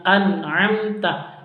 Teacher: nun sukun berjumpa dengan ain, bacaan izhar jelas, bacanya an'amta, nun sukunnya jelas. Terus amta mim sukunnya juga jelas karena bacaan izhar safawi, mim sukun berjumpa dengan ta.